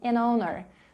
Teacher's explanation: owner starts with a vowel sound. We use an, so we can connect both words.